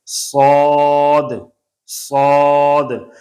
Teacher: آگے ہے صاد، یہ شکل ہے اور یہ اس کا نام ہے، صاد، زبر، آگے الف ہے، اوپر بڑا مد ہے، اور آخر میں دال ہے۔ موٹا حرف ہے، موٹی آواز نکالیں گے، فل ساؤنڈ، مفخم حرف۔ اور دوسرا یہ ہے کہ سیٹی والا حرف ہے، اس میں سیٹی کی آواز، اس کو سختی سے پڑھیں گے، صاد، صاد۔ اس میں کوشش کریں گے کہ صاد کے اوپر زبر ہے اور آگے الف ہے، صاد اور زبر ہو تو بن جاتا ہے صا، صا۔